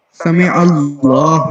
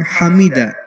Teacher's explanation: سمع اللہ میں جو ہا ہے وہ چیسٹ والا ہے، اور حمیدہ میں جو ہے وہ ہا حلق والی ہے